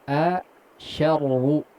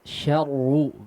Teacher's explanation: Ya. Syarru, baru masuk ke ro-nya yang tebal, ya. Jangan tebal sedari huruf shinnya